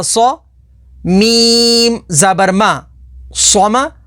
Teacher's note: ہا صاد پیش حس، اللہ، صاد کے اوپر تشدید ہے، تشدید والے حرف کو 2 دفعہ پڑھیں گے۔ صاد حروف مستعلیہ میں سے ہے تو اسے پر یعنی موٹا پڑھیں گے۔